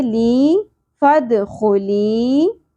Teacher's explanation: या साकिन हरफ मद्दा, एक अलिफ के बराबर खींचेंगे